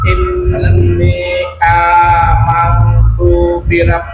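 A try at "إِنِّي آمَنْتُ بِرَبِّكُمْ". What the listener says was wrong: Tuh-nya tuh amang tuh birab, jangan dilamakan tuh-nya. Amantu tu birob.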